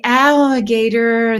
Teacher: the ah is blended in with the liquid all that follows it